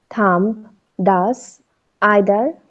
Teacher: The tongue is normally placed behind the teeth with the tip touching the inside of the lower front teeth and the blade touching the inside of the upper teeth. The air escapes through the gaps between the tongue and the teeth. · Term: Dental fricatives